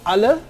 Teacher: And last but not least, there are 2 central vowels, the schwa in unstressed position